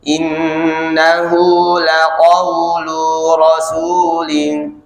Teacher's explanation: ketukan cepatnya di huruf lu. Kalau nggak fokus bisa panjang lu-nya.